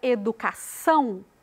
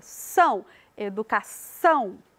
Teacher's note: Na palavra educação, a gente coloca mais ênfase lá na última sílaba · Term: sílaba tônica